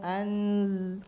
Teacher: nun sukun kalau ketemu dengan Zai maka disamarkan ya Jadi dibacanya bukan an lagi bukan anzalna tapi disamarkan langsung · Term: ikhfa Hakiki